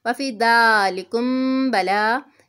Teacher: میم ساکن کے بعد با آ رہا ہے، اخفا میمی ہے، یہاں پہ غنہ کر کے پڑھیں گے